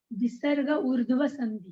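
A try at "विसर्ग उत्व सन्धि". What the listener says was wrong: Urdhva no, utva, utva. Ukara of visarga.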